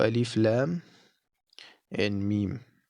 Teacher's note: the lamb and the meme are both lengthened but do not neglect the nasal sound of the meme